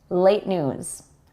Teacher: We don't quite release that T sound when we speak quickly.